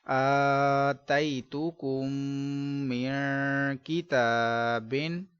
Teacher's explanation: میم ساکن کے بعد دوسری میم ہے، ادغام شفوی کا قاعدہ گنہ کریں گے